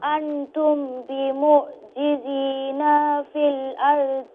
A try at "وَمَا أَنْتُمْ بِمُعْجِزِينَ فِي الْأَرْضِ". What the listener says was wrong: See, you said بِمُعْجِزِينَ فِي So you made the ba long and the noon long in بِمُعْجِزِينَ, the first and the last thing. Letter.